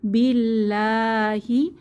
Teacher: এখানে আল্লাহ লাম পাতলা করে পড়তে হবে, এক আলিফ টেনে, খাড়া জবর আছে তাই এক আলিফ টেনে পড়ব।